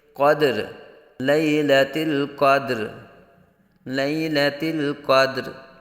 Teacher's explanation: دال ساکن میں قلقلہ خوب ظاہر کریں گے